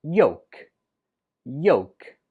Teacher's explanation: When we spell it, we write it with an L, but when we speak it, we do not pronounce the L at all. It's just pronounced yolk. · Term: silent letter